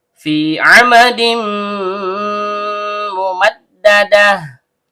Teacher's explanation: Panjang dua harakat dan setiap panjang keluar dari rongga mulut.